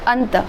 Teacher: हमने इसमें नाक में से हवा जो क्या है केवल बाहर की तरफ निकलती है, मतलब उच्चारण करते समय हवा केवल नाक से निकल रही है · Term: अनुस्वार